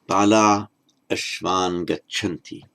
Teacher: long ah, followed by a vowel, all that happens is the visarga drops out.